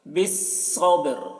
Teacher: کو موٹا کر کے، بالصبر، با میں قلقلہ کریں گے، صبر، با کی آواز ٹکرائے گی اور را ظاہر ہوگی ، بالصبر، آخر میں را کی آواز ظاہر ہو رہی ہے،